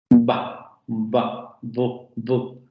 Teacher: Vibración de cuerdas vocales, bloqueo de la salida de aire en los dos labios y luego momento explosivo de liberación de aire. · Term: Bilabial oclusiva sonora